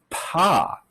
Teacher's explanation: the lips part and then after that the vocal cords start vibrating in fact you can feel a little puff of air